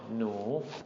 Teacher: also an N sound, nu, long rising tone, nu